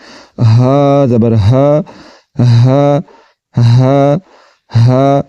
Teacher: تو اب ان کی پریکٹس کرتے ہیں اور ان کو سیکھتے ہیں۔ ہا زبر ہا، حلق کے نیچے والے حصے سے آواز نکل رہی ہے